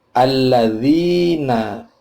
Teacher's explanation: ada kasroh ketemu ya, dibaca panjang dua ketuk, namanya mad tabi'i